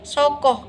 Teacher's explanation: penghambat itu terjadi dengan menempelkan daun lidah pada langit keras dan selaput suara tak bergetar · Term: Kontoid frikatif